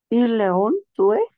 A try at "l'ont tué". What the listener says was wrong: Le on tué, oui, mais parce qu'il y a ces deux voyelles ensemble, on va faire l'élision l'on tué ou imparfait du verbe tuer.